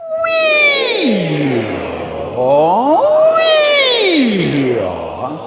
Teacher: It starts with we and goes to aw. The we is high, the aw is low. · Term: the siren